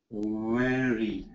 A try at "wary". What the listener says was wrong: Good, but don't let the tongue touch when you do the R.